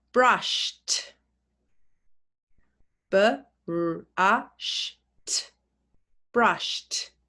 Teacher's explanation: So it's spelt the same, but we say t instead of id.